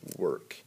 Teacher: it's kind of a schwa sound it's not long it's not short